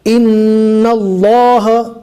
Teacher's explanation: اللہ کے لام سے پہلے والے حرف پر زبر ہے، لہٰذا یہاں پر اللہ کے لام کو موٹا پڑھیں گے